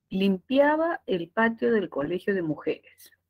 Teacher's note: es un enunciado declarativo con Tono descendente